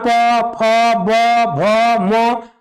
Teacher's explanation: प वर्ग जितना प फ ब भ म सबका उच्चारण होठ से हुआ